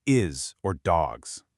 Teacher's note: sounds more like a buzzing Z, especially at the end of words like is or dogs